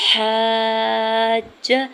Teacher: اس کے اوپر مد لازم ہے۔ 4 سے 5 حرکت کھینچ کے ادا کرتے ہوئے جیم مشدد کے ساتھ ملاتے ہوئے پڑھنا ہے، جیم کے زبر کو کھینچنا نہیں ہے۔